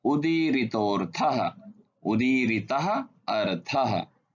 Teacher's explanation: आगे स्वर अ होने के कारण विसर्ग को ओ हो गया